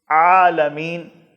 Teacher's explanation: عالمین، اس میں عین ہے، یہ بھی حلق کے درمیان سے ادا ہوگا